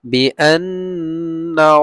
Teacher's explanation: নুনের উপরে তাসদিদ ওয়াজিব গুন্না